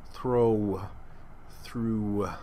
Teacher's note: That W gets lost in the vowel. Throw, through, and it becomes a diphthong.